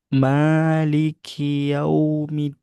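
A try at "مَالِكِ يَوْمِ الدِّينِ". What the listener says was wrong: Dalnya sama mamanya jangan terlalu ma. Ma, ma. Agak tipis lagi. Ma.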